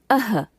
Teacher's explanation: विसर्ग का उच्चारण अह के रूप में होता है